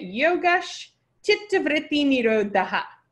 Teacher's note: But because they think it would be more pleasant to hear it this way, the visarga, the aha, becomes a sha, and we get yogash chittavritti nirodaha.